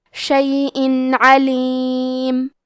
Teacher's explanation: ہم یہاں تنوین ظاہر کریں گے اور اسے نون ساکن پڑھیں گے اور بغیر غنہ سے یہ حکم کو ادا کریں گے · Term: اظہار